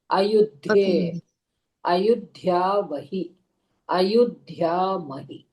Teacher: when you are saying the dhakara, it is mahaprana. So da no sollakudadu.